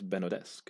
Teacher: But that sounds like it's got a glottal stop in it, and maybe, bearing in mind the French origins, you should pronounce the D because of the vowel afterwards. So it's Benaudesque.